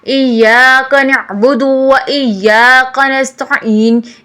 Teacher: غلطی یہاں پر ہوتی ہے، ایاک نہیں کہنا بلکہ صحیح ہے ایاک نعبد و ایاک نستعین۔ ایا میں اپنی تشدید کو مضبوط کریں۔